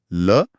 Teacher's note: ल पार्श्विक है क्योंकि जीभ तालू को छूकर रास्ता रोकती है और हवा बगल से निकलती है